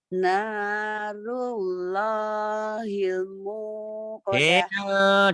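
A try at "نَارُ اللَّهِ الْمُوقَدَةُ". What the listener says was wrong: Coba ditahan deh. L-nya ditahan. Narullahil muqadah kayak ditahan L-nya. Nanya panjang. Nanya panjang. Narullahil muqadah.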